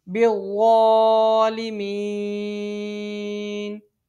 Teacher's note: یہاں وقف کی صورت میں یہ نون ساکن میں تبدیل ہو جائے گا، عارضی سکون ہو جائے گا۔ حروف مد کے بعد عارضی سکون مد عارض اس کو 3 انگلی کے برابر کھینچ کے پڑھا جاتا ہے